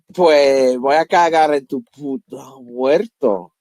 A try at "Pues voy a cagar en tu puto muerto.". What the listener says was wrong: Okay, so that was pretty aspirated. Now try again.